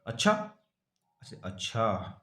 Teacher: दोनों वाक्य समान है पर सुर और अनुतान के बदल जाने से प्रश्न का वाक्य कथन दूसरे आश्चर्य का सूचक बन जाता है